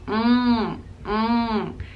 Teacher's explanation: kind of using the back of your throat and using your nasal sound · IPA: /ŋ/